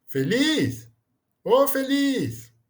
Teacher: a força da pronúncia está na última sílaba, ou seja, é a sílaba tônica, né? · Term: oxítona